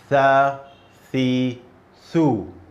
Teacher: Your tongue should go between your front teeth.